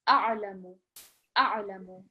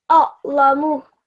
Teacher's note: So ayn from the middle of your throat